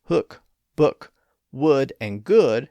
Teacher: words like hook, book, would, and good have that uh sound of put, even though they're spelled with double O's.